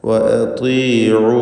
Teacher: വാവിനെ 4-5 ഹറക്കത്തിൻ്റെ അളവിൽ ദീർഘിപ്പിക്കുക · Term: മദ് മുൻഫസിൽ ജായിസ്